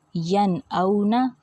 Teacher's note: نون ساکن ظاہر کر دیا، ناک میں آواز نہیں لے کے گئی میں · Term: اظہار حلقی